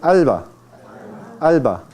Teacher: Cuando usted pronuncia alba, la lengua no toca los dientes superiores, sino toca la región alveolar. Entonces, eso es la consonante alveolar.